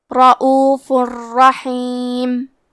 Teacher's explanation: کلمت رؤوفن میں فا پہ تنوین پیش ہے، پھر حرف الراء آتا ہے کلمت رحیم۔ را حروف الادغام بغیر غنہ میں سے ہے تو ہم تنوین کو را میں ملا کے بغیر غنہ سے لیکن تشدید کے ساتھ یہ حکم کو ادا کریں گے۔ رؤوف الرحیم، کلمت رحیم میں حا کی ادائیگی حلق کے درمیان والے حصے سے ہے۔